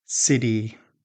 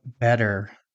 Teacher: a quick sound that feels more like a soft d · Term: flap t